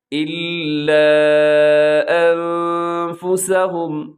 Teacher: یہاں نون میں اپنے آواز کو ناک میں لے کے جانا ہے، اس کے لیے جو ٹرم استعمال ہوتی ہے وہ ہے اخفا، یعنی آواز کو ناک میں چھپانا ہے آپ نے۔